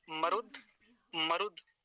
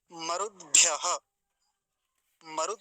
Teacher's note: द आधा है तो मरुद पर जाकर रुकेंगे